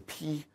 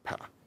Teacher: VOTs tend to be longer preceding high and tense vowels like E, as in P, than they are in low and lax vowels like in PA